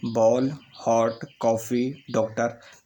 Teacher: अंग्रेजी भाषा में जो आगत ध्वनियाँ हैं वो अर्धचंद्राकार रूप में हैं। जैसे आ और ओ के बीच की ध्वनि